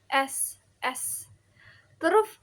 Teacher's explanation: ini tuh contoh voiceless atau tak bersuara ya, karena pita suara kita tuh nggak bergetar